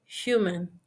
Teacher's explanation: For example, human. The initial sound is a glottal fricative that does not exist in most dialects of Spanish. Many omit in saying human instead of human.